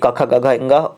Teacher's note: क ख ग घ इंगा और विसर्ग है तो उनका उच्चारण होता है कंठ से।